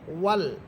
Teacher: ওয়াও হরফ ঠোঁট গোল করে পড়বেন